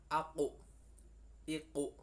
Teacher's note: Qaf aku kalau mati maka akan keluar cengkoknya, memantul yang namanya huruf qalqalah · Nah, jadi nekuknya itu terasa di dalam, terasa di dalam. Qaf bertempat di pangkal lidah dekat anak lidah dengan langit-langit dan lurus di atasnya.